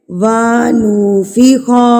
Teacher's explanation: آپ جب پڑھتے ہیں وَنُفِخَ، جب آپ نے پڑھا وا لمبا کیا تو آپ نے وا کے آگے الف لگا دیا. جب آپ نے پڑھا نو تو آپ نے نو کے آگے واو لگا دیا.